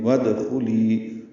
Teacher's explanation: ادخلی کا حمزہ عارضی ہوتا ہے، واو کو دال سے ملا دیں گے